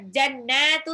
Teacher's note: Dia gunnah nun tasjid dan dibaca 2 harokat.